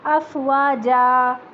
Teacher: اسے صرف 2 حرکت تک لمبا کریں گے، 4 حرکت تک لمبا نہیں کریں گے کیونکہ اس کے بعد اور کوئی ساکن نہیں ہے، ٹھیک ہے۔